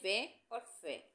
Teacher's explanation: दंतोष्टे। इन वर्णों के उच्चारण में ऊपर के दांत तथा नीचे के होठ का प्रयोग किया जाता है।